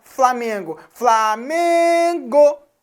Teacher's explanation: o k é a sílaba mais forte você fala Flamengo Flamengo então o meio é a sílaba tônica da palavra Flamengo · o me é a sílaba tônica da palavra Flamengo